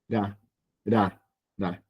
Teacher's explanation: como si fuera una L, perdón, pero golpeándola